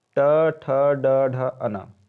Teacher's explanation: मूर्धन्य, उच्चारण स्थान है मूर्धा, मुंह के भीतर की ऊपरी छत का अगला भाग,